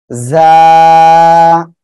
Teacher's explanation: জিব্বার আগা, সামনের নিচের এই যে দুই দাঁত, নিচের দুই দাঁতের পেট ও আগার সঙ্গে লাগিয়ে এ অক্ষরটা উচ্চারণ হবে